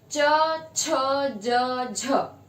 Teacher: stop और fricatives के characteristics एक साथ होते हैं कि घर्षण भी करती है और अचानक से छोड़ी जाती है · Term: एफ्रिकेट्स